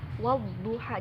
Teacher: Jadi alif lamnya nggak kebaca di situ, bukan wal duha, bukan. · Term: alif lam syamsiyah